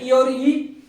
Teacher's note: ये तालू से बोले जाते हैं इसको तालू स्वर कहते हैं